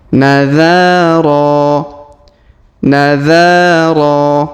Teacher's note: huruf dza kita panjangkan dua harakat karena Alif di di depannya huruf ro kita panjangkan dua harakat karena Alif di depannya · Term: panjangkan 2 harokat